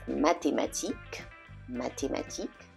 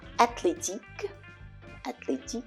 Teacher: the th combination is pronounced as a regular T always always